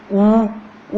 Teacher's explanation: ऊ बोलने पर अपने होठ क्या हो जाते हैं? पूरे गोल हो जाते हैं। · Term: ओष्ठ